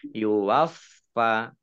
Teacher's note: Khairi waffa, fa-nya dibaca double, ada tasdidnya.